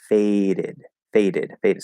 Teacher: that first D in fade is tapped, is flapped